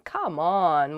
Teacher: you can also use it with downward intonation as in come on when you feel upset about something uh